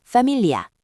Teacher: GL은 우리말에는 없는 독특한 발음인 리 소리로 파밀리아, 가족에서처럼 혀를 입천장에 붙여 부드럽게 냅니다.